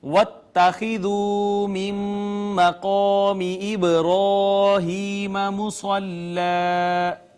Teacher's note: قاف حروف مستعلیہ میں سے اس کو پر کر کے ہم نے پڑھا